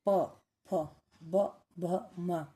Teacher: ओष्ठ। ओष्ठ वर्ण जैसे इन वर्णों को बोलेंगे तो हमारे दोनों ओठ आपस में मिलेंगे। स्पर्श करेंगे।